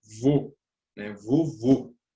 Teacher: é utilizado o acento circunflexo para indicar um O fechado.